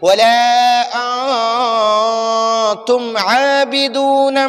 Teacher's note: تو اب ہم نون ساکن میں غنہ کریں گے، ناک میں نون ساکن کو چھپائیں گے